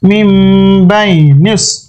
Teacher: নুন সাকিনের পরে বা আছে, এই জন্য এখানে মিম দ্বারা পরিবর্তন করে পড়তে হবে। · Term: ছোট্ট মিম